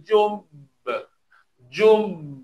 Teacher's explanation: Qalqalah yang paling yang paling kuat. Maknanya tekan dulu baru keluar bunyi qalqalahnya. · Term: qalqalah akbar